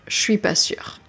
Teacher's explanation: the subject pronoun je becomes che a lot of the time in spoken French